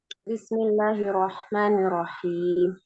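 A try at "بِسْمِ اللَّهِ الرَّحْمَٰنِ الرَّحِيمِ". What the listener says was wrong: nunnya jangan dipanjangin ya ulangi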